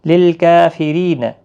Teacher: را زیر کی وجہ سے باریک ہوگا